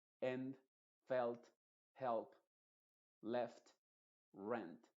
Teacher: esa e se va a pronunciar con el sonido modificado de la e que es una e tal cual en español